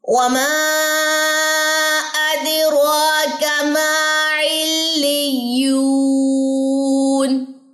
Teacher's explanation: اد کلکلا ہوگا، را کے اوپر 2 سیکنڈ اب اس کو لمبا کریں گے. کاف کی زبر کو آپ نے لمبا نہیں کرنا، ماں کو لمبا کرنا ہے کیونکہ الف مد ہے. یہاں پہ بھی 2 تشدید ہے، دونوں جگہوں پہ رکا جائے گا.